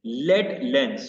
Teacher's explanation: the short a assonance combines with alliteration of L. Lead lens, so same assonance and the L sound to create a smooth and swift sounding phrase.